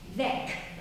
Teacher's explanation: It's pronounced with an open E and very K sound.